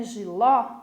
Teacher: A palavrinha giló é uma oxítona, porque a última é a sílaba mais forte.